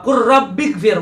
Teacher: lam bertemu dengan ra maka wakur jadinya, lamnya yang hilang ya